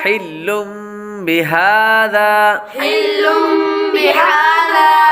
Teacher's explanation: پہلے لفظ کے اندر لام پر تنوین ہے، تنوین کے بعد با حروف اقلاب میں سے آ رہا ہے اس لیے غنہ کر کے پڑھیں گے. ہا پر کھڑا زبر ہے اس لیے اس کو ایک الف یعنی 2 حرکات کے برابر لمبا کریں گے کیونکہ کھڑی حرکات حروف مدہ کے قائم مقام ہے.